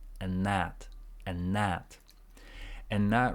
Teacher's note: again same thing with end so it's just n andn and when you link and with that it's like a longer n Sound there